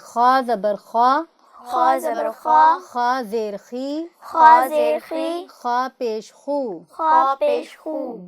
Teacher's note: خا چونکہ حروف حلقی سے ہے تو آپ نے اس کو حلق سے ادا کرنا ہے۔